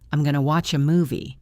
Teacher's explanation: going to becomes gonna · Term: reductions